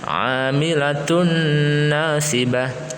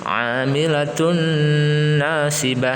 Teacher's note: Tun ini juga mendengung, idgham biguna ya. 3 harokat atau lebih.